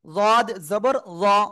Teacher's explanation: এরপরে জদ জবর জ, জিহ্বার গোড়ার কিনারা উপরে মাড়ির সাথে লাগাবেন, লাগিয়ে উচ্চারণ করলেই যা হবে তাই।